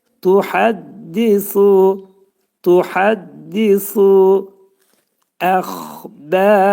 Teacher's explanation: xa hərfi boğazın yuxarısındadır